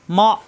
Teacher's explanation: হামজার সাথে মা গলার ভিতরে এসে আটকে যাবে মা শক্ত হবে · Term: শক্ত করে পড়া